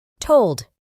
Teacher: Para pronunciar correctamente este verbo, debemos añadir una U muy fina después de la O.